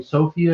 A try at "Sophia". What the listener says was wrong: You emphasize the wrong syllable.